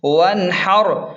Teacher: واو نون زبر ون، را زبر حر، وانحر، نون پر جزم ہے تو یہاں غنہ نہیں ہوگا، اظہار ہوگا